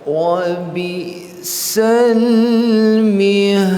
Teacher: Qalqalah kubra lagi kerana kita waqaf.